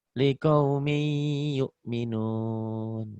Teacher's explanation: Liqaumin. N-nya bertemu Y. Jadi N-nya berubah jadi Y. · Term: Idgham biguna